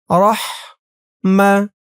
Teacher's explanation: হার আওয়াজটা গলার ভেতর থেকে চিকুন হয়ে বের হবে